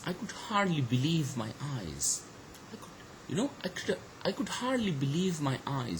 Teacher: We do have two syllables, hard and leave, which are actually stress syllables, okay. So the stress falls on these two syllables in the sentence.